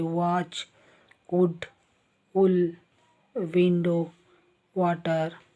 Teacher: ಎರಡು ತುಟಿಗಳು ಮುಂದೆ ಬಂದುದು ಆಕಾರ ಗೋಲಾಕಾರವಾಗುತ್ತೆ